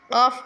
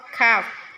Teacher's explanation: Qaf itu lebih dalam, kaf itu ringan ya, tipis.